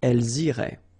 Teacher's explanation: remember, make the liaison as well. You get this S and then the vowel after